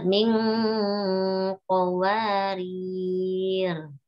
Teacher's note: Rirnya dipanjangkan boleh dua, boleh empat.